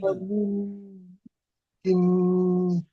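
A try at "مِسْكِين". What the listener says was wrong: কিন, আপনার গুন্না হয়ে যাচ্ছে, এটি টান হচ্ছে না, টান আলাদা আর গুন্না আলাদা। মিসকিন, কিন, মিস নয়, মিস কিন।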